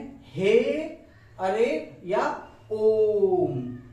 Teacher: तीसरा आपको मिलेगा प्लुत स्वर, यानी इनके उच्चारण में ह्रस्व से 3 गुना समय लगता है